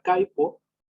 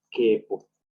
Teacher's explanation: la A pasa como E cuando se forma el diptongo ay. Por ejemplo, en la palabra caipo, cuando se pasa al español, queda como quepo.